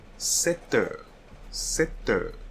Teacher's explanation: we are going to have a liaison between the T and the EU. So it will create an extra letter like T.